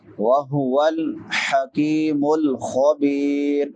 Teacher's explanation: حکی کاف باریک ہے، کاف کے بعد یائے مدہ ہے، حکیم الخبیر، خا حروف حلقی میں سے ہے، ادنا حلق سے ادا ہوتا ہے، حلق کے شروع والے حصے سے۔